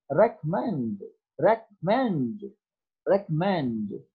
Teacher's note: The third syllable mend is more prominent than the other